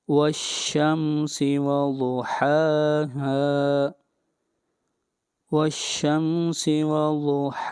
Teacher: والشمس وضحاها، ضاد حروف مستعلیہ میں سے ہے، ضاد کو موٹا پڑا جائے گا اور ہا کو لمبا کریں گے 1 الف کے برابر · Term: مد اصلی